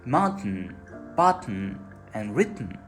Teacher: we have quick T, when it appears for a mere instant and then disappears.